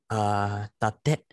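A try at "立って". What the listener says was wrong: Yes, tatte. Perfect.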